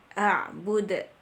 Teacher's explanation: Bud, itu qalqalah kubro, karena dia berada di akhir bacaan. Di saat kita berhenti, maka kita membacanya dengan tebal dan dipantulkan.